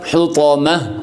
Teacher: تو پھر اس کے اوپر ہم وقف جب کریں گے تو پہلے ہم اس تا کو ہا کے ساتھ تبدیل کریں گے، پھر اس کے اوپر وقف ہم کریں گے، یعنی ہا کی آواز آئے گی